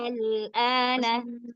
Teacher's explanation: Dipanjangkan hamzahnya yang 6, al 6 harokat.